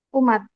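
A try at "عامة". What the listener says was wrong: Ammah. ain ya, bukan umat. Pakai ain. Ammah.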